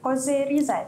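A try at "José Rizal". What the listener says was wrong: Jose Rizal. Okey, sebutan dia bukan Jos Rizal ya, Jose Rizal sebab Spanish punya pronunciation, maka Jose.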